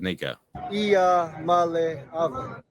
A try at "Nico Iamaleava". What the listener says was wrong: I think you might have an extra vowel, though.